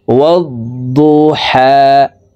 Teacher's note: ওয়াদ-দু হা ওয়াদ-দুহা ওয়াদ-দুহা। হা হরফকে হলকের মধ্যখান থেকে উচ্চারণ করতে হবে, কারণ হার মাখরাজ হলকের মধ্যখান থেকে হবে।